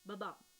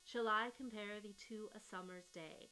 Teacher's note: An iamb is a foot that has the specific pattern of an unaccented and short syllable, followed by a long and accented syllable (Buh bum), kind of like a heartbeat.